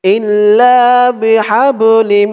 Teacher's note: এখানে ইদগামে বাগুন্না গুন্না হবে কারণ তানবিনের পরে ইদগামে বাগুন্নার চার হরফের এক হরফ মিম আসছে